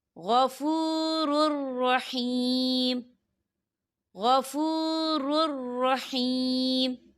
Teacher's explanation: یہاں دیکھیں غفور را کے پر تنوین ہے اور تنوین کے بعد را آ رہا ہے، اور را جو ہے حروف یرملون میں سے ہے، تو یہاں پر ادغام ہوگا اور ہم اسے بنا غننے کے پڑھیں گے